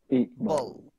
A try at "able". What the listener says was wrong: কিন্তু ball বলেন না able I am able to do this not like this able.